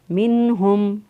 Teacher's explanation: ہا جو ہے اس کو اکثر حلق سے ادا کیا، میم ساکن کے بعد دیکھیں نہ میم ہے اور نہ ہی با ہے، لہٰذا یہاں پر اظہار شفوی ہوگا۔